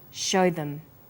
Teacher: here show is stressed and them is unstressed so we say show them this is vowel and consonant linking